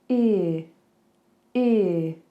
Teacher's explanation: This one starts on an e, like sheep. So I want you to get into that E shape, into that smile, E, and then release it. Do that same release into a schwa.